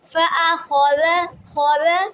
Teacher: خا کو پر پڑھنے، ذال کو بالکل انتہائی نرمی کے ساتھ اور باریک پڑھنا ہے